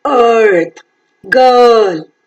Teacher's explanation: Is central, unrounded vowel between half closed and half open, long vowel, as in earth, girl, etc.